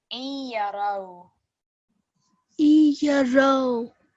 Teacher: this is our partial assimilation, which means we're slightly going to hit a nasal sound when we join these two together.